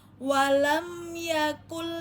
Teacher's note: Walam ya dibaca biasa walam ya walam yaaku nun sukun bertemu dengan lam maka menjadi lebur. Nunnya berlebur dibaca ke lam ya tanpa dengung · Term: Idgomong bilagunah, idgham bila guna